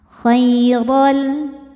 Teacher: Khairal huruf ra dibaca secara tafkhim karena berharokat fathah tanwin, maka ra-nya tebal